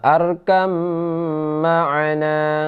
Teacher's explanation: Jadi arkam ma'ana, ba diidghamkan ke dalam mim menjadi idgham mimi, jadi disertai dengung dua harkat